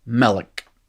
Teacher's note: you can kind of hear the old word malk transformed into a two-syllable word but it still sounds kind of monosyllabic it's melik right it's not mellick you didn't go asking for